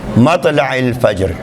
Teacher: جیم کو ساکن کرنا ہے, جیم کو ساکن قلقلے کے ساتھ پڑھنا ہے یعنی متحرک پڑھنا ہے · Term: قلقلہ